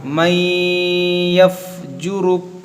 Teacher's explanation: نون ساکن کے بعد یا حروف یرملون یہاں پر غنہ ہوگا ادغام ہوگا